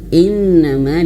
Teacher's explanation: di sini ada nun bertasydid maka harus ditahan. Ditahan tiga, dua atau tiga harakat.